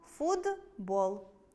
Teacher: Наприклад, у слові “футбол” поруч стоять звуки [т] і [б]. Дзвінкий [б] впливає на попередній глухий [т] і у вимові звук [т] перетворюється на свій парний дзвінкий [д]. Тому хоч пишемо футбол, вимовляємо [фудбо́л]. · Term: уподібнення